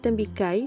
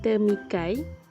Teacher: penggantian konsonan plosive labial b kepada konsonan nasal labial m